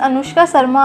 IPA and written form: əˈnʊʂkaː ˈʃərmaː (Anushka Sharma)